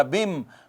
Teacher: اس نون کا ادغام میم میں ہو گیا، تو بن کی بجائے بم ہو گیا